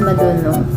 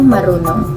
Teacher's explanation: ang pagpapalitan ng D at R ay nagaganap kapag ito ay nakapagitan sa dalawang patinig.